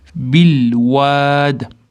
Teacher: Bil ulaymiz, o'rtada alif o'qilmay qoladi. Vovdan keyin mat kelyapti.